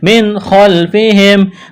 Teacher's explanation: نون ساکن کے بعد خواہ ہے، حروف حلقی ہے، اظہار کریں گے، بغیر غننے کے پڑھیں گے۔ خلفہم، خواہ کو موٹا کرنا ہے۔